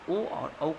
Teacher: जो है सो आपको ये दोनों मिलके आपको हो जाएगा बच्चों कंठ और ओस्ट अगर मिल जाता है इन दोनों के सहयोग से ओ और औ का होता है